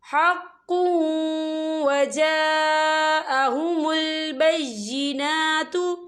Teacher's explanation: یہاں پر خالف سے پہلے زبر ہے، اور اس پر مد بھی ہے، تو ہم اسے 4 حرکت کے برابر کھینچ کے پڑھیں گے